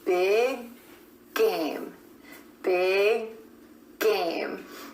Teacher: The back of the tongue is coming up for the final G at the end of big and then releasing into game.